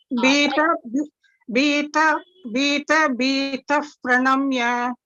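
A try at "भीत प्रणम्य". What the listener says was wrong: Correct. Very good. Bhita, bhitaf, pranamya. Like the English if, correct.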